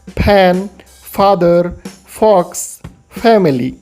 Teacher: फैमिली के उच्चारण में होंठ आपस में स्पर्श नहीं होगा